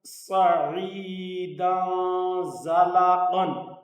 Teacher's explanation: صاد زبر صا، عین زیر یا عی، صعی، دال دو زبر دن، صعیدن، زا زبر زا، صعیدن ز، لام زبر لا، صعیدن زلا، قاف دو زبر قن، صعیدن زلقن۔ صاد پر بھی سیٹی کی آواز ہوگی، زا پر بھی سیٹی کی آواز ہوگی، قاف پر پڑا جائے گا، صاد بھی پر پڑا جائے گا، اور یہاں دال کے اوپر دو زبریں ہیں یعنی تنوین ہے، اس لیے یہاں اخفا ہوگا۔